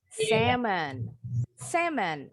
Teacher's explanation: The L is silent. L-nya nggak bunyi.